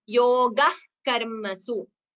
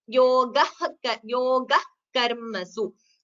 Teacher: So you don't chant the visarga completely.